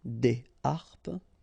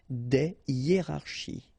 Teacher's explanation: no liaison here, here, here, and here. All right, because these words are starting with what we call H aspiré